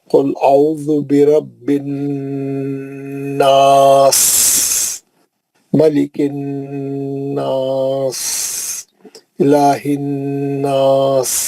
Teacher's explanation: سین میں تو بہت باریک سیٹی ہے، بالکل ہوا کی سین